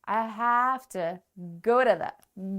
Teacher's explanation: Go is stressed and to is a preposition, teeny tiny word, doesn't get stressed.